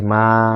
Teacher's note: যখন বলছি মা তখন কি বেশি খোলা হচ্ছে ফলে এটি হচ্ছে বিবৃত